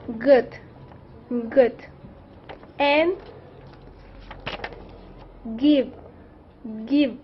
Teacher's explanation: you use the back of the tongue to block airflow from your throat the sound is voice because your vocal cords vibrate to make · The G sound is voiced because your vocal cords vibrate to make it the sound. For example, good, good, and give, give.